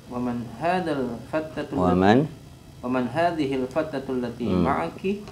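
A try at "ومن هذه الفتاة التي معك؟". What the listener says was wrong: Ba'da ta hunaka alif. Waman hadhil fatatul.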